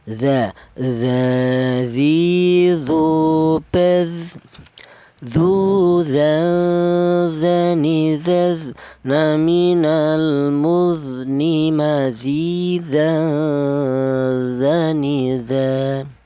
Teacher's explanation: keluarnya huruf berasal dari ujung lidah menyentuh ujung gigi seri atas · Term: huruf zal